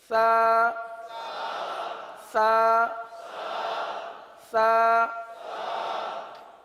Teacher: یہ زبان کا سرا اور اوپر کے دانتوں کے اندرونی کنارے سے یہ حرف ادا ہوتا ہے